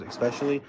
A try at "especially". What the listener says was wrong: Hey, there's no X in especially.